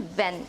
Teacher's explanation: The 10th consonant is the V, as in ven. It is described as a voiced labiodental fricative consonant.